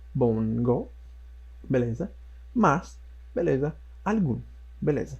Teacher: Todas com tonicidade na última sílaba e terminadas em OS ou vogal. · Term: oxítonas